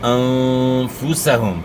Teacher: بھی کھڑی زیر کے بعد حمزہ ہے, یہاں جو ہے مد منفصل ہے, 3 سے 4 الف کے مقدار کے برابر آپ نے مد کرنی ہے, انہیں کھینچنا ہے اس کو. انفسہم, نون ساکن میں آپ نے غنہ اخفا کے ساتھ کرنا ہے